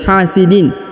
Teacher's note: tanwin in dibaca jelas atau izhar karena tidak ada yang mempengaruhi atau dipengaruhi berubah menjadi dengung dan samar